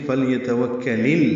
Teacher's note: فلیتوکل، لام ساکن پہ اظہار، یا تا جلدی ادا کریں گے، واو کو کاف سے ملائیں گے، کاف باریک پڑھیں گے